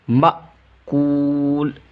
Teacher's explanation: حمزہ ساکنہ کے پڑھنے میں جھٹکا ہوتا ہے